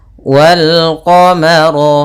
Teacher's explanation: rnya tebal karena ro berharakat fathah · urjunilqim pada bacaan qar di sini ada alif lam Qariah yaitu ada Alif dan lam tertulis dan dibaca bertemu dengan huruf Qariah salah satunya ad huruf q maka lamnya dibaca dengan jelas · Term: alif lam qamariyah